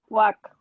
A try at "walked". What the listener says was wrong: Yeah, that T sound. Walked. So it almost sounds like if you write it this way, just with T at the end. Yeah, that just together, walked.